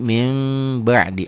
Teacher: bunyi n dilatenkan bunyi nun mati Samiun juga bunyya n nah bunyi n-nya Kalau bertemu dengan ba berubah jadi m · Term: iqlab